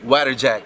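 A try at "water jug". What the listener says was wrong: Yung u tsaka yung a nababaliktad mo.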